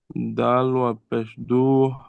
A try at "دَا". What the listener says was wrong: دال، دیکھیے دال کے بعد الف ہے پہلے. دال الف زبر دا. جی اب دیکھیے خالی زبر ہے تو اس کو جلدی پڑھنا ہے، لیکن جب زبر کے بعد الف ہے تو زبر کو کھینچ کر پڑھنا ہے. جی دال الف زبر دا.